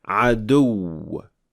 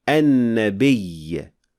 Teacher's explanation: Nabr is the Arabic word for stress, which is a particular emphasis laid on, in this case, the last syllable of the word.